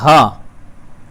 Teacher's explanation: हा का जो स्थान है वो कंठ है। कंठ से बोला जाता है, मतलब हमारी जो हवा है वो कंठ से टकरा के आती है। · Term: ऊष्म व्यंजन